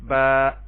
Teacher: اب آپ دیکھیں الف خالی، اس سے پہلے زبر، الف کو الف مدہ کہیں گے اور اس کو ایک الف کے برابر لمبا کریں گے، با زبر الف با، اور اس کی جگہ پہ کھڑی زبر کو بھی استعمال کر سکتے ہیں، با کھڑی زبر با۔